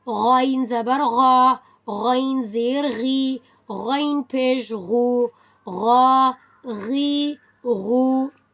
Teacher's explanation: حلق کے اوپر والے حصے سے غین ادا ہوتا ہے from the upper throat, voiced sound